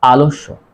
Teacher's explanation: শব্দের মধ্যে অ এর পর জ ফলা থাকলে অ এর উচ্চারণ ও এর মতো হয়